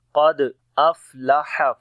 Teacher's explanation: دال کے اوپر قلقلہ کریں گے، کمزور قلقلہ ہوگا، قد افلح، فا کے اندر صفت ہمس ہے، سانس جاری ہوگا